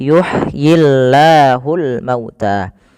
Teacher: lafal Allah bila didahului dengan huruf kasrah maka tidak boleh ditebalkan. Nah di sini kita namakan dengan lamut tarqi lam yang tipis.